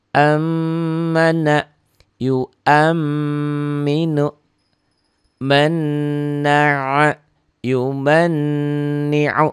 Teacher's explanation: Huruf gunnah cuma 2, nun dan mim bertasdid. Dibaca nyamber dan double sama seperti huruf lainnya. Tapi ada bedanya, ini ada ditahan dan ada dengung ke hidung.